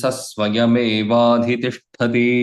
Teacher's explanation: Even if Visarga is there, we should not say Saswayam. The Visarga should be dropped.